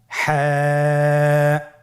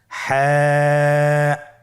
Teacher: হা হরফটি উচ্চারিত হবে কন্ঠনালীর মধ্যখান হতে। গলা চিপে ধরে আপনি উচ্চারণ করুন।